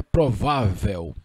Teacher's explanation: Foneticamente, isso aqui é um ditongo. Quando você diz provável, você diz dois sons vocálicos, E e U, o L tem som de U, então foneticamente, graficamente aqui, você tem uma consoante, graficamente, mas foneticamente você tem um ditongo, e na realidade a acentuação seria por isso também, né?